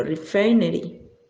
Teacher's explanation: La I, el sonido es más breve que el de la I española. Tenemos el acento ascendente, tenemos la F, que es como una F española.